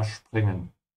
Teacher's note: Remember to pronounce the S like sh because it comes before a P